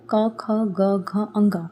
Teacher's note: क्योंकि जब आप बोलोगे तो आप देखना क, ख, ग, घ, अ की आवाज कहां से निकलती है? आपके कंठ से निकलती है।